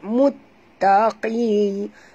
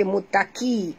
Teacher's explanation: Qi di sini mesti baca tebal. Bukan baca mutaki. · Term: huruf qaf